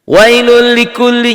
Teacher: Tapi ini kalau pengen pintar sedikit ya, ini adalah idgham bila gunnah. Diidghamkan, dimasukkan tanpa disertai dengan dengung. Kenapa? Karena domatain ketemu lam ini ya.